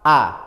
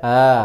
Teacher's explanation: kalau fathah a gak boleh di diseret e